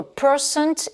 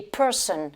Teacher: à percent, on prononce le T à la fin, alors que dans person, on ne le prononce pas.